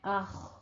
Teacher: اخ میں حمزہ باریک ہے. خو کو پر پڑھنا ہے